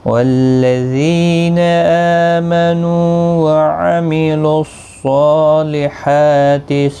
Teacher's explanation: یہاں پر صاد کے اوپر کھڑی زبر ہے، حا کے اوپر بھی کھڑی زبر ہے، دونوں کو ایک ایک الف کی مقدار کے برابر کھینچ کر پڑھیں گے۔ اور صاد حروف مستعلیہ میں سے ہے، پر پڑھا جائے گا۔